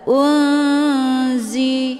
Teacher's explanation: Unzi ada nun sukun ketemu huruf za, ini dinamakan dengan ikhfa awsat, mana awsat pertengahan. Cara bacanya, nunnya disamarkan kemudian siap-siap menuju huruf za. Unzi. Hukum bacaan ikhfa awsat dibacanya sambil didengungkan.